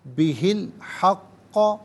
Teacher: ہا کے نیچے زیر ہوگا، اس سے الحق کے لام ساکن کے ساتھ ملائیں گے، درمیان میں سے الف یعنی حمزہ کو حذف کیا جائے گا